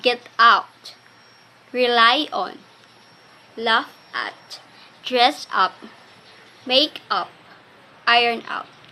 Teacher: the primary accent is on the second component